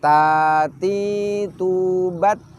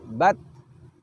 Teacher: Nah, bat di situ kita bisa merasakan suara kita tahan terlebih dahulu, baru setelah itu nafas kita alirkan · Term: syiddah